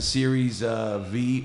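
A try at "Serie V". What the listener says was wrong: Series, no S.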